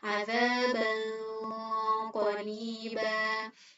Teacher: Nah, kemudian untuk pelafalan ikhfa ab'ad untuk qaf itu bedanya di nomor keduanya, yaitu mengalirkan suara gunnah secara tafkhim atau tebal